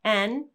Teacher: when we say the name of the letter N, we have the lips open and the tongue is touching behind the top front teeth